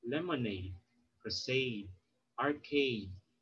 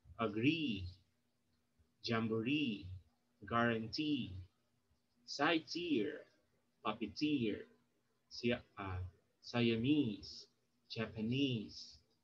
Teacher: Okay, so here words that use the suffix aid, e, is, ear, k, it, or un have the primary stress actually placed on the suffix. Okay, so you put the stress on the suffix itself. For example, lemonade, crusade, arcade.